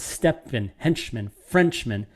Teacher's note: a feminine rhyme is a double rhyme where the stress is not on the final beat so the stress is on french hench step